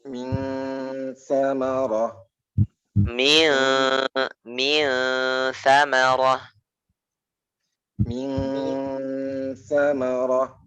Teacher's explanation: Jadi ikhfa itu bunyinya itu tidak eng banget ya Pak ya, nggak eng banget, tapi samar.